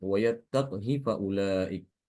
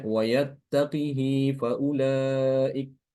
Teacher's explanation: Imam Ibnu Katsir ini mengganti qaf yang sukun itu diganti dengan kasroh.